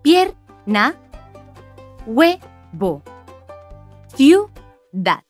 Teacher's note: las dos vocales se pronuncian en la misma sílaba porque forman un diptongo